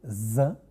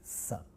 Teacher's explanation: voicing means it refers to the vibration in the vocal cord we have vibration in the vocal cord when we say Z and almost no vibration when we say s